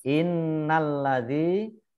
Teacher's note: nun tasdid dibaca gunnah ditekan dua harokat